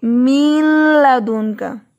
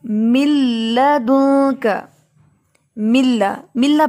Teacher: ہم اس کو یہ نہیں پڑھیں گے من لدن کا، بلکہ ہم یہاں پڑھیں گے من لدن کا، ملا، ملا پڑھیں گے۔ نون جو ہے وہ مکمل طور پہ داخل ہو چکا ہے لام میں، جس کی وجہ سے نون کی آواز ختم ہو گئی ہے